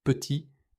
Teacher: Petit se prononce petit sans le t final. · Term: la consonne finale, consonne finale